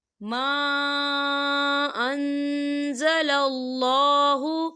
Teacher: دیکھیں ما خال الف سے پہلے زبر ہے اور اس پہ مد بھی ہے، تو ہم اسے 4 حرکت کے برابر کھینچ کے پڑھیں گے